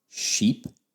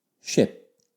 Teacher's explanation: sheep which has the long e and ship which is the shorter